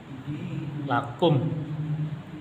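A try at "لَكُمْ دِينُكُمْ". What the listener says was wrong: Masih ada memnya. Lakum habis bersih. Iya, harus bersih ya. Kalau lakum itu masih mengandung mem.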